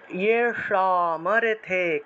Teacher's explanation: কিম ভোগৈর জীবিতে নওয়া ইয়ে সামর্থে, ইয়ে সা মূর্ধন্য স আছে, তাহলে স স জিহ্বা উল্টে, জিহ্বাটাকে উল্টিয়ে স উচ্চারণ করতে হবে